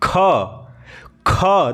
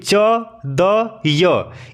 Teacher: ख ख देखिए इसमें ज्यादा हवा आ रहा है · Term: महाप्राण